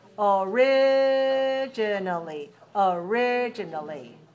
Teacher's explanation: the adverb goes along with the adjective, and it's stressed on the second syllable